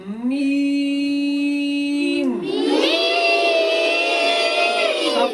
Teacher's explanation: जो मीम अदा होगा वो हुश्की वाले हिस्से से अदा होगा